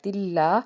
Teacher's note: قاعدہ ہے مگر یہاں پہ غنہ نہیں ہوگا، ٹھیک ہے، اور الف سے پیچھے زبر ہونے کی وجہ سے اس کو ایک الف کے برابر کھینچ کے ادا کیا